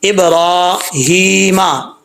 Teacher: ابراہیمہ، اب لوگ پڑھتے ہیں ابراہیمہ، ایسے نہیں پڑھنا، را کے اوپر کھڑا زبر ہے، سٹینڈ زبر، تو اس کو لمبا کر کے پڑھنا ہے، ایک الف کی مقدار